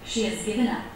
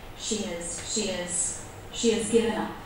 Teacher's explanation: Do you see how the word has is very low in pitch? It's actually been reduced, and I've dropped the H.